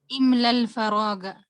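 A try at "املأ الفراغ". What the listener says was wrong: हाँ, इमलल, आपने बीच में से इसको मिस कर दिया ना, इसको मिस नहीं करना, इसको पढ़ना है हमजा को।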